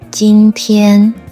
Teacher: Just use your normal middle to high voice range and keep it flat and stable. For example, today in Chinese is a word with 2 first tones.